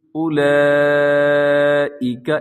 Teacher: سب سے پہلے دیکھیے گا لفظ ہے اولئک، اس کے اوپر بڑی مد ہے، اس کو مد واجب بھی کہا جاتا ہے، مد متصل بھی کہا جاتا ہے۔ اور اس میں جو واو لکھا ہوا ہے وہ واو آپ نے نہیں پڑھنا، یعنی اس کو اپنے لمبا نہیں کرنا، بلکہ اولئک ایسے پڑھنا ہے۔